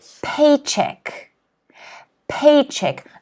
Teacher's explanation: notice that the stress is in the first syllable